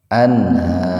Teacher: an ini dibaca idhar tetapi dibaca sepintas saja gitu. karena nun mati ketemu hanya dalam satu kata, tidak terpisah.